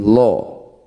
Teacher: lafaz Allah didahului dhammah, maka lamnya harus dibaca dengan tafkhim atau tebal. La kita ganti jadi lo.